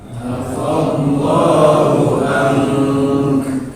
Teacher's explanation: Nun mati ketemu ka berhenti. Berarti hukum ikhfa. Jadi cara berhentinya ditahan 2 harokat dengan ikhfa.